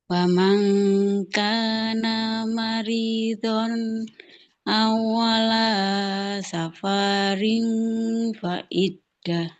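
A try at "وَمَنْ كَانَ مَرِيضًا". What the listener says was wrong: Maridon ini nggak boleh maridon, nggak boleh panjang. Wa man kana maridon au ala.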